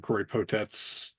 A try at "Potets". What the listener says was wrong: It's the second T silent. So Potets.